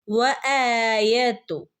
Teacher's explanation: ഹംസന്റെ കൂടെ അലിഫ് മദ് വന്നിട്ടുണ്ട്, അവിടെ രണ്ടനക്കം നീട്ടിക്കൊടുക്കുക